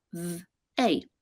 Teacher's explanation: we have the voiced th and then the letters ey to represent the a sound. So we have th, a.